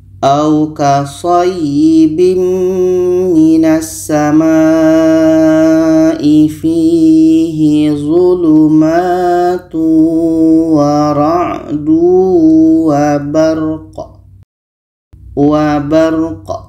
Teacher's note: Qa ini mati maka qalqalah, ada pantulan.